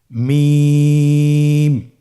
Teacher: হ্যাঁ, 2 ঠোঁট চেপে ধরে আমরা উচ্চারণ করব